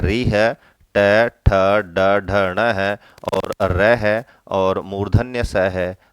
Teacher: इनका जो उच्चारण स्थान है वो है मूर्धा